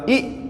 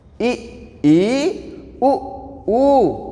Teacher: समरस स्वर जिनके उच्चारण में मुख द्वार लगभग बंद होता है